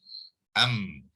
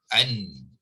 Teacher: So semasa menyebut am, an, suara dan udara itu serta bunyi itu akan pergi melalui rongga hidung. Okay, dia bukannya keluar pada mulut, ya. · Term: Mim mati